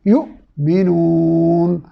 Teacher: حمزہ جو کہ حلق کے ابتدائی حصے سے ادا ہوتا ہے، اس کو ساکن ہونے کی صورت میں جھٹکا کے ساتھ ادا کرتے ہیں